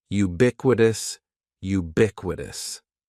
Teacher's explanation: And ubiquitous has four syllables. That first syllable is just like you're saying the letter u. Ubiquitous. And the stress is going to be on that second syllable.